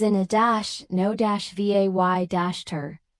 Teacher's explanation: innovator is in -no-vay-ter with stress on the first syllable